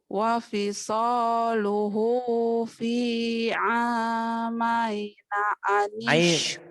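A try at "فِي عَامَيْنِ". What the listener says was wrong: Maini bukan amaina. Maini.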